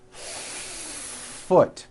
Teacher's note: do you see how long I'm holding that F · you need to hear the air friction when practicing ing try to give the f one beat foot